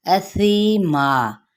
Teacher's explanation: तनवीन ज़बर है नन पे, तो इस पे हमने क्या करना है, इजहार का कायदा है। असीमा, हमजा को वाज़े तौर पे पढ़ेंगे सा नरमी के साथ, सीमा, यहाँ पे यह मद्दा और वक्फ किया तो वक्फ बिल इब्दाल, ठीक है।